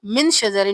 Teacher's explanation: نون پہ اخفا کریں گے،